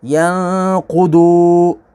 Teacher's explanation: ضاد کو بھی پر پڑھیں گے، یہ بھی حروف مستعلیہ ہے